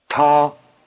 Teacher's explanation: notice the extra explosiveness of the tea